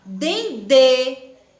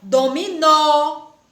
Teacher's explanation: Não abrimos tanto a boca, o som é meio fechadinho, né?